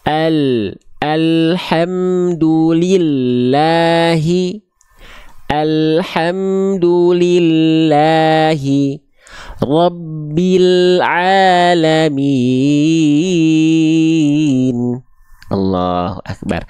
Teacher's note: hanya tepi atau samping lidah bagian depan yang kanan dan depan yang kiri keduanya menyusur sampai ke ujung lidah disentuhkan ke langit-langit depan kita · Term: huruf lam